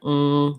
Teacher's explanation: It sounds like ng. It's with the back of the tongue lifting. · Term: NG sound